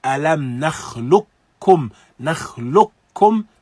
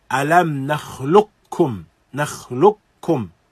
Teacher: from the lam, bypass the qaf completely straight to kaf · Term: idghamun kamil